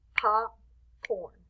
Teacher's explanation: you see how the pop is a little stronger